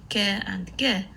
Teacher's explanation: the back of the tongue is raised to come into contact with the lower sides of the soft palate while the way to the nasal cavity is closed when the